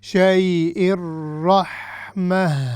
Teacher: جب روکیں گے ہم تو یہ تا مربوطہ ہے تو یہ ہا میں تبدیل ہو جائے گی